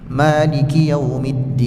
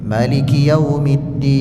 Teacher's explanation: Cara yang pertama kita baca maanya itu panjang. Maliki yaumiddin. Cara yang kedua dibaca pendek.